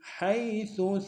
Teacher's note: حیث میں یا لین ہے بغیر کھینچے پڑیں گے